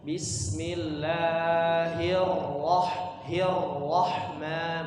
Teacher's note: Ra-nya ditasydidkan sedikit lagi